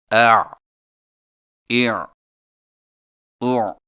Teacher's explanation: عین حلق سے رگڑ کھاتی آواز۔ ادائیگی کے وقت زبان کی جڑ کو حلق کی طرف مضبوطی سے دباتے ہوئے ادا کریں، مثلا اع اع او۔